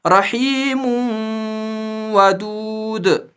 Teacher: ادغام کرنا ہے لیکن گنہ کے ساتھ، نون کی آواز کے ساتھ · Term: ادغام مع الگنہ